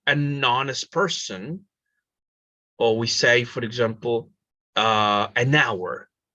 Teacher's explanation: An honest person in this case, because H is muted, right? H is muted in this case, an honest person, an hour, etc., etc., etc., right?